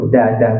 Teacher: Da, itu bahasa Melayu kita, da. Bahasa Arab, slang Arab, makhraj huruf dal, hujung lidah letak belakang gigi atas.